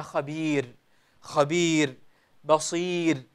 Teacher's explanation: إذا وقفنا عليها يا أيها الأحبة فعند جميع القراء نرقق الراء ولا نفخمها